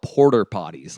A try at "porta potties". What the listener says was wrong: Porter potties? porta potties. It's short for portable. Portable. Yeah, portable potties.